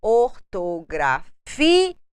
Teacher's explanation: Nós colocamos uma tonalidade mais forte quando nós falamos ortografia. Nós temos uma tonicidade, uma força maior na penúltima sílaba e é uma paroxítona não acentuada porque termina com a letra A. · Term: acento tônico